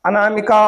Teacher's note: अनामिका का को खींच दिया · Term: प्लुत